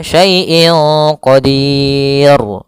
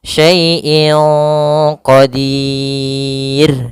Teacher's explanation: Ro tarqik tidak boleh dibaca qadir jadi tebal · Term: ra tarqik